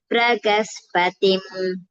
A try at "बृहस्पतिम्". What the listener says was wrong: பிரக இல்ல, ப்ருஹஸ்பதிம்.